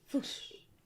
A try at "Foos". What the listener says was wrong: Why are you adding H? Foos. Foos.